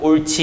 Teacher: 히읗과 지읒이 합쳐져 가지고 옳지 이렇게 변하는 거예요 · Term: 자음 축약